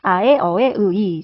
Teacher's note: 입술을 둥글게 오므리지 않고 발음하는 모음이었습니다. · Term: 평순 모음